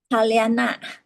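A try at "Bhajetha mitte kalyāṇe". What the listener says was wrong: Kalyane. Bajeta mitte kalyane, because there's E. You know, when we read stanzas, there is a tradition, poetic tradition called rhyme. So rhyme means it has to end with the same.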